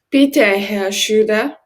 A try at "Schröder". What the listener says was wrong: For your second line, make sure Schröder, you are not dropping any of the R's. I know R is a tricky letter in German, but let's say again, Schröder.